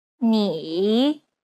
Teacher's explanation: it's the most unique tone out of all the tones because the pitch dips and then Rises knee imagine a ball bouncing on the ground as you make